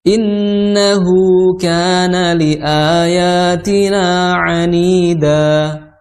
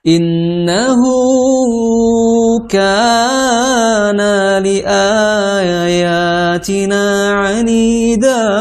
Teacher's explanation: Di situ ada ha, ya, hu, ka, a, ya, ni, da. Itu 2 harokat semuanya. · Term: mad tabi'i